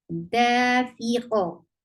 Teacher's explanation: But qaf with sukoon will activate your qalqala.